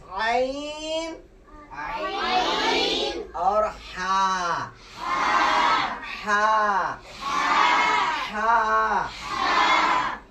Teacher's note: वस्ते हलक से जो दो हरूफ अदा होंगे वो हरूफ है ऐन ऐ और हा